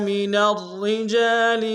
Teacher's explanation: را کو موٹا ادا کریں گے، شد زور دیں گے